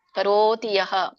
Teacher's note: ತೆಕ್ವಾ ಕರೋತಿ, ರಗೆ ದೊಡ್ಡ ಓ ಇದೆ. ಕರೋತಿ ದೀರ್ಘ ಎದ್ದು ಒತ್ತಿ ಹೇಳ್ಬೇಕು.